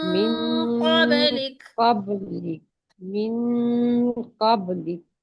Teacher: इक्फा करने के लिए आपकी जुबान नीचे रहेगी, ना पीछे से ऊपर लगेगी, ना आगे से ऊपर लगेगी।